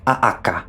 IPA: a'aka